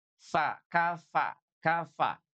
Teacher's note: Jadi bibir bawah kita disentuhkan dengan gigi seri atas. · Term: huruf fa